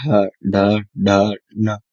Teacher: जीभ आगे से थोड़ी उल्टी हो रही होगी ऊपर वाले हिस्से में लग रही होगी। तो ये है आपका मूर्धा।